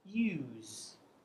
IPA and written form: juːz (use)